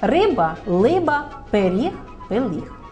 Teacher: звук р діти в цьому віці ще можуть замінити на звук й л ль